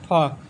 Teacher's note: ऊष्म संघर्षी दंतोष्ठ अघोष महाप्राण।